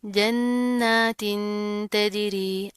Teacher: नून के ऊपर पहले तशदीद आ रही है, हम गुन्ना करेंगे। उसके बाद क्या है, यहाँ पर तनवीन है, उसके बाद हरूफ इख्वा में से ता आ रहा है, तो यहाँ पर हम इख्वा करेंगे, गुन्ना करेंगे, ठीक है।